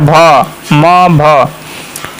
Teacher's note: भ जो है ओठ टच कर रहा है · घोष भी है, महाप्राण भी है और ओठ बोल रहा है इसमें